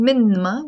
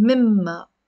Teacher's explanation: instead of saying مِنْمَا we are merging them and we're saying مِمَّا